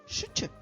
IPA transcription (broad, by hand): шч